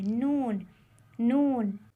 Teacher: ज़बान का किनारा कुछ नरम अंदाज में ऊपर की जड़ों से मिलता है और नाक से आवाज़ निकलती है। ये देखिए ज़बान है और ज़बान का किनारा जब सामने वाले दांतों की जड़ों को हल्का सा लगता है तो ये हर्फ अदा होता है नून।